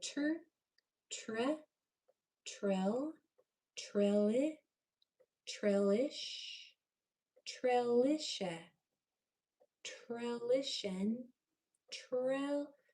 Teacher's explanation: Make sure you pronounce that TR clearly and not turn it into a lazy CHJ sound